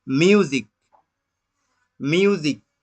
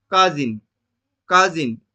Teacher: একই রকম ভাবে মিউজিক, মিউজিক, তাহলে এস এর আগে আছে ইউ ভাওয়েল রূপে, এস এর পরে আছে আই ভাওয়েল রূপে, এর জন্য মিউজিক এস এর সাউন্ড দন্তাস্য না হয়ে বর্গাজ্য হয়েছে